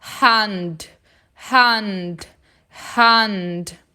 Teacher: E atenção para não falar hand, hand, com esse A bem nasal, né? Saindo do nariz. Pensa no A de casa.